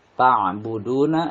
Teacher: du ini mad tabi'i karena doma bertemu waw sukun dan dibaca panjang 2 harokat